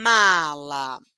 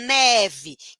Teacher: Ele também é nasal, ele também é sonoro, mas o ponto articulatório é diferente. O M é bilabial, o N é linguodental.